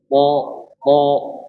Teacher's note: Ujung lidah bertemu dengan gigi dari atas. · Huruf tha ini wajib ee mufakhamah. Wajib dibaca tebal.